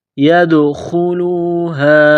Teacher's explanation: دال پر قلقلہ کریں گے، ان يدخلوها الا، چشمے والی گول ہا ہے، منہ سے ہوا نکالنے کی طرح پڑھیں گے